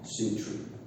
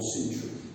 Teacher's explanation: Century with a schwa. Century without schwa.